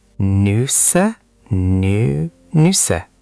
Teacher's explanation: N-U with two dots, that's an umlaut, then S-S-E, Nüsse. The U is a rounded sound. Shape your lips like you're saying oo, but try to say E.